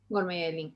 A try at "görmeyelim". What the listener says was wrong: La pronunciación es Görmeyelim. No lo pronuncias con la acentuación en im. Görmeyelim. Aquí el acento va aquí prácticamente aquí.